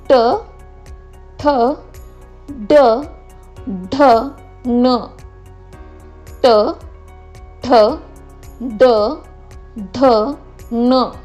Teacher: आपली जिव्हा म्हणजे आपली जीभ जी आहे तिचं जे टोक आहे तिला आपण मोडतो, मोडून आपल्या टाळूला तिचा स्पर्श होतो, त्याला मूर्धा असं म्हणतात.